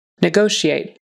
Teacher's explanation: The ta is a shh sound. Negotiate. Uh, upon syllable stress on the second syllable and it's a short o.